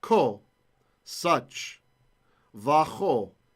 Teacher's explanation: if you have a little weak dagesh there that makes the kaf a K sound, and it's preceded by a vowel, well, that guy falls away.